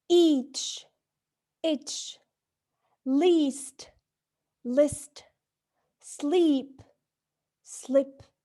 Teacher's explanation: Notice that even if both vowels are positioned in the front, their quality differs. We say that the vowels E and E are contrasted where the former is longer than the latter.